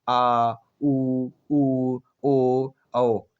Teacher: पश्च स्वर, जिनके उच्चारण में जीभ का पिछला भाग कार्य करता है।